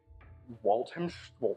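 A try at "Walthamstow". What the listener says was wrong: Do not pronounce the ham. Leave the ham out.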